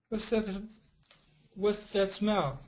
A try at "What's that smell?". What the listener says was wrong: That's right. Make this S stronger. What's that smell?